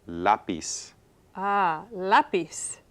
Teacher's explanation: we want stress in that second to the last syllable okay so again ends in a consonant and stress is on · so again ends in a consonant and stress is on the next to the last syllable